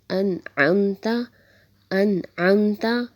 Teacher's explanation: نون کو ظاہر کر کے پڑھنا ہے بغیر غنے کے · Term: اظہار